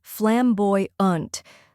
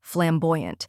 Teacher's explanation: First, we have flam, which rhymes with jam and sounds like the beginning of flame. Next is boy, which rhymes with toy and is stressed. Then comes unt, which sounds like in important.